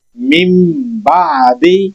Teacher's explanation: جب تنوین یا نون ساکن کے بعد حروف حلقی میں سے کوئی حروف آئے گا تو ہم اظہار کریں گے، نون کو خوب ظاہر کریں گے، اور جب تنوین اور نون ساکن کے بعد اگر با آ جائے گی تو پھر ہم نون ساکن کی آواز کو ختم کر کے میم کی آواز پیدا کریں گے اور پھر اگلا حرف ساتھ پڑھیں گے